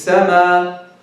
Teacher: He drops the Hamza completely.